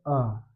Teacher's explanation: इसका जब हम उच्चारण करते हैं तो उसका उच्चारण करेंगे अ यानी मुंह में कहीं भी कंपन नहीं होता। बहुत थोड़ा सा हमारी जीवा जो है बीच में उठती है मध्य में। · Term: मध्य स्वर